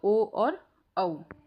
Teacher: अंतिम में हमारा कंठोष्ठ है, यानी कि कंठ और होठ दोनों का ही इस्तेमाल होगा, तो ओ और औ।